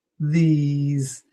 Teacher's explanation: These is longer and ends in an S, but it sounds like a Z.